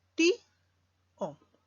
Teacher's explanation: una vocal cerrada acentuada seguida de una vocal abierta. Por lo tanto, se van a separar y tenemos dos sílabas, ti-o. Y no te olvides que cuando tienes dos vocales cerradas adyacentes seguidas, también forman hiato. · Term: hiato acentual